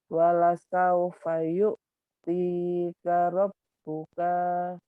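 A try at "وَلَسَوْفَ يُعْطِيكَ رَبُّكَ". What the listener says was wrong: Pendek. Tinya panjang. Tinya panjang.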